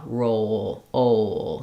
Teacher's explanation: o is also a diphthong, I'm sliding. So as I say o, I'm lifting the back of the tongue. starting in a more open position and closing my jaw.